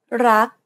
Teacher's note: In order to pronounce this word properly, however, you want to stop just as the back of the tongue contacts the roof of the mouth. Never release the air of final consonants in Thai words.